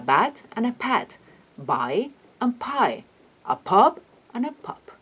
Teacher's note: the difference in voicing is the only difference between those two sounds